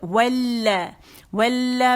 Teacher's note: و کے لیے ہونٹ مکمل گول ہوں گے زبر کے ساتھ